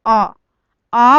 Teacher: आ बोलोगे तो आपका मुंह जो पूरा खुलता है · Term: विवृत